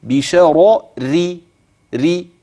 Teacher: نحف الحرف في المخرج برضه، والصوت ما ملاش الفم، والصفة بتاعته ضعيفة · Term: الترقيق